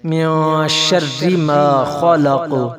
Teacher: من شر ما خلق تو قاف پر قلقلہ کریں گے، جھٹکا دے کر پڑھا جائے گا